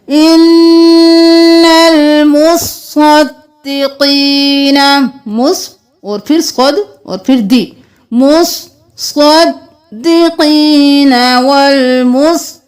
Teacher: یہاں پر بہت سے لوگ مصدقین مصدقات پڑھتے ہیں، لیکن یہاں پر صاد پر ایک تشدید چھوڑ دیتے ہیں، تو آپ نے صاد پر بھی، صاد کو بھی 2 بار پڑھنا ہے، دال کو بھی 2 بار پڑھنا ہے